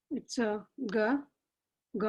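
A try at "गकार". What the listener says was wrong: It is not ga. It is gakara. You have to say it properly. That gakara.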